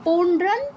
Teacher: বর্গের অনুনাসিক ধ্বনিটাই উচ্চারণ করতে হবে। তো এজন্য আমরা পৌডরান এখানে অনুসার পর দ আছে দ ত বর্গের তাই অনুসারের জায়গায় নয় হসন্ত উচ্চারণ করছি